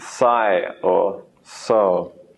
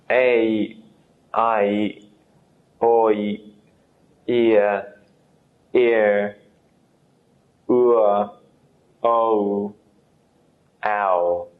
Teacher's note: These are diphthongs, combination sounds from one syllable.